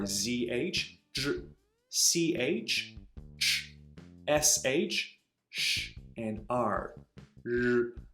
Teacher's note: the retroflex initials, meaning those where the tip of your tongue is curled up toward the hard palate